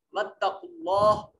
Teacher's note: ख्वाफ को मोटा करके पढ़ेंगे, ये हुरूफ मुस्तालिया में से है · इसमें जलालत अल्लाह को भी मोटा करके पढ़ेंगे, इसलिए कि इसमें जलालत का माकबल मजमूम है, जम्मे वाला है, पेश वाला है, इस वजह से कलमा इसमें जलालत को मोटा पढ़ा जाएगा।